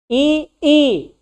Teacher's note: जब हम ई और ई बोलते हैं जीभ जो है वो आगे आ जाती है, दांत में सड़ जाती है, इसलिए ये क्या हो गया अग्र हो गया।